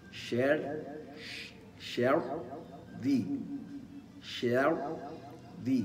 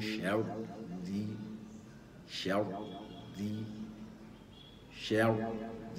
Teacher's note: ساكنه وما قبلها مفتوح وينطق الراء الراء الراء الثانيه راء مرققه فيدخل الى الراء الساكنه الاولى وهو بهيئه التفخيم ويخرج منها الى الراء المكسوره الثانيه بهيئه الترقيق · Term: راء مضغمر